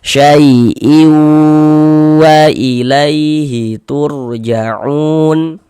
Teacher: bunyi tanwinnya dimasukkan ke huruf waw. Kita baca syai'iu, jangan dibaca syai'in, jangan, tapi dimasukkan ke huruf waw. · Jadi bagian iunya itu suara itu kita tahan, kita panjangkan saja sepanjang 2 harokat. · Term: idgham bi gunnah